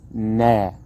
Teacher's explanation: taken down to three syllables nah okay the first syllable nah it has a letter in the Arabic version to represent a long vowel here so it's not a narrow fast one it's a long one